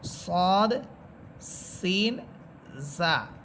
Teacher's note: যে তিনটা হরফ উচ্চারণের সময় ঝিঝি পোকার মতো আওয়াজ হবে, সদ, সিন, জা।